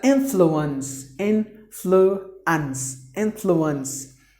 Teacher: 3 syllables. The stress is given in the beginning.